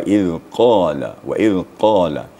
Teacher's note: makhjul hurufnya atau makhrajnya pada pangkal lidah jadi waq waq Dit terasa getarnya pada pangkal lidah